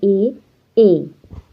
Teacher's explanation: कंठ व तालु का मेल, जिससे हमारा निकलता है ए